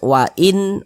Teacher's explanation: Nun sukun berjumpa dengan huruf hamzah hukumnya izhar halqi. Karena dia izhar maka cara membacanya itu dibaca jelas, tidak berdengung, tidak digunahkan.